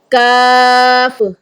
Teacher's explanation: زبان کی جڑ سخت تالو سے لگتی ہے, جب زبان کی جو جڑ ہے نا टॉन्सल के पास ज़बान की जड़ ऊपर वाले सख्त तालू से जब टच करती है तो काफ अदा होता है